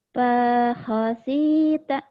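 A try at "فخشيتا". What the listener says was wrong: Bukan. Panya pendek. Shinnya gede. Pakhosyita.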